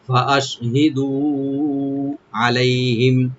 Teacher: ফা ওপেন রাখবেন, আর হামজাকে ওপেন করে হি বলবো, দু একালে টানবেন